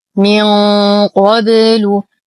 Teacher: لدينا نون ساكنة وبعدها حرف القاف، فالحكم إخفاء حقيقي مع غنة كاملة مفخمة